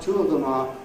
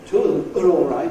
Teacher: at least you slow down enough to say /ɑː/ instead of /ə/